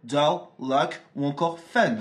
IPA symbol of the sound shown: ʌ